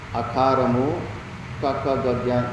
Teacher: అకారము కక గజ్ఞ ఈ 5 అక్షరాలు, మళ్ళా హకారము విసర్గము, ఇవన్నీ కూడా లోపల ఉన్న ప్రాణవాయువు కంఠంలో ఎక్కువ టచ్ అయ్యేందుకు దాన్ని వాటి స్థానము కంఠం అంటారు